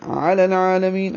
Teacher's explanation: عین پر کھڑا زبر ہے 2 حرکات لمبا کریں گے اور دوسرا لام جو ہے وہ باریک ہے. می یا مدہ ہے یا مدہ کو یہاں پہ مد عارض سکون یا مد وقفی بنائیں گے کیونکہ آگے نون ساکن کر دیا ہم نے وقف کیا اس لیے مد وقفی.